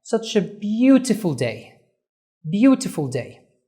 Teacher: طيب beautiful هتلاحظ ان اول syllable واول مقطع لفظي هو ده اللي احنا عملنا stress on. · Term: stress on the first syllable